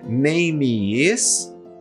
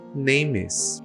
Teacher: palavra terminou com som de consoante, segunda palavra começou com som de vogal, ligamos as duas palavras. Então, ao invés de eu dizer, como a gente tem dito até agora, name is, a gente vai falar names.